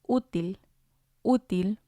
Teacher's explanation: And again, it has 2 syllables. And we see the accent on the U, so we're going to stress that one, útil. Otherwise, it would have sounded like útil, útil.